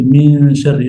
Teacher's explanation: So So, what happens here is that you cancel you need to cancel the mouth point of articulation and you still keep the nasal sound engaged. You still keep the nose engaged in producing the ghunnah. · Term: ikhfa